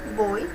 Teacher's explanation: Nós temos aí uma vogal e uma semivogal, o O e o I